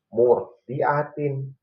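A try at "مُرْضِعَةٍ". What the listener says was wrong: Masih kerasa getarnya banyak, Pak?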